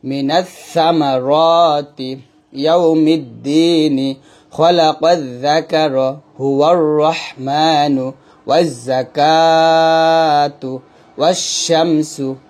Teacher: এই প্রত্যেকটা জায়গায় কিন্তু আমরা এই আলিফ এবং লামটা পড়ি না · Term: হরফে শামসি